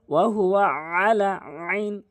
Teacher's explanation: আইনটি হলকের মাঝখান থেকে উচ্চারণ করতে হবে